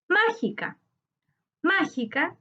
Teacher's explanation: Su sílaba tónica está en ma, correspondiente a la antepenúltima sílaba.